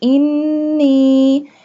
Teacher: اللہم، اللہ لام کو ایک الف کے برابر کھینچ کے پڑھیں گے کیونکہ اس کے اوپر کھڑی زبر یعنی کھڑی فتحہ کا نشان ہے۔ اللہم انی، نون کے اوپر تشدید ہے اس وجہ سے یہاں پہ غنہ کریں گے انی، اور نون کے اوپر مد ہے اس وجہ سے اسے کھینچیں گے انی اعوذ بکا، عین، عین حلق کے درمیان والے حصے سے ادا ہوگا۔